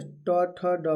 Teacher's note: ट, ठ, ड और ढ वर्ण जो होता है मूर्धा से बोला जाता है। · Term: मूर्धन्य